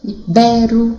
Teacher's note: A sílaba forte é no bé.